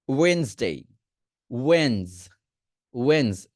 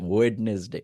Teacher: Just ডি এর উচ্চারণ আমরা করব না।